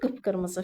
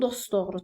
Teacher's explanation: Qırmızı, qıp-qırmızı fikir versiz, çoxaltma dərəcəsini yaratdım. Çoxaltma dərəcəsini yaratdığım üçün vurğu birinci hecanın üzərində oldu.